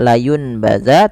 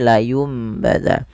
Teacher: Iklab itu terjadi apabila ada nun sukun atau tanwin an in un bertemu dengan huruf ba, sehingga nanti bunyinya kan awalnya nun, bunyi n. Karena dia bertemu ba, nanti bunyinya diganti dengan bunyi huruf mim atau huruf m. Maka tidak lagi dibaca layun baza, tapi layum baza, dan sambil ditahan 2 harakat.